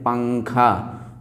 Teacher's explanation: نون کی آواز کو ناک میں چھپا کر پڑھنا چاہیے، یعنی نوک زبان تالو سے ہٹا کر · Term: اخفا